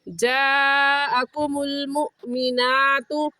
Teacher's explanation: हमज़ा साकिन है और हमज़ा साकिन पर हमेशा झटका देते हैं, झटका देंगे। मुमिनातु, इसे मुमिनातु पढ़ना गलत है और सही है झटका देकर मुमिनातु।